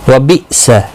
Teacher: یہاں پر حمزہ ساکن کو جھٹکی کے ساتھ پڑھا جائے گا